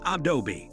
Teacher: People mispronounce this name since they split the name into two syllables, Ah-dobe rather than three Ah-doh-be